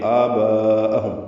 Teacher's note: آگے آباءہم آ میں مد بدل ہے، دو حرکات لمبا ہے. با میں مد متصل ہے، یہ اس کو ہم 4 حرکات سے زیادہ لمبا کرتے ہیں